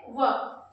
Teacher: दंतोष्ट से व यानी कि दंत और ओष्ट दोनों की सहायता से व